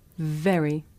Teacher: When I say very, my teeth are touching my lip.